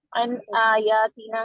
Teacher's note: یہاں پہ اظہار ہونا تھا، یہاں پہ انہوں نے اخفا کر دیا تھا